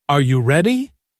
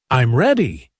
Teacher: when you say, Are you ready? your voice rises at the end. But when you say, I'm ready, it falls. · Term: intonation